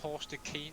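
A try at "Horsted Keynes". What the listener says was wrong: Horsted Canes is how it's pronounced. Yeah, technically speaking, it's pronounced Horsted Canes, not Keens. Yeah, it's pronounced Canes, though. Canes.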